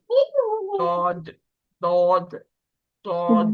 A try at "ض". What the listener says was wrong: دود نہیں کریں اس کو. دود دال کے مخرج سے نہیں پڑھیں. دود نہیں ہے یہ. واد واد. اس کے مخرج میں آواز جو ہے وہ پھیلی ہوئی ہوتی ہے.